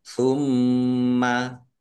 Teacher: mim tasdid dibaca ghunah atau mendengung ditahan biar tampak mendengungnya